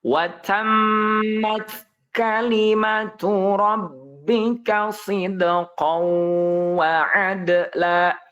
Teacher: Mimnya pendek ya, mimnya. Kemudian taknya itu harus mengeluarkan napas.